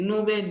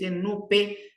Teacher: la nube en vez de decir nube nos dic nupe simplificado la B simplificado por el sonido p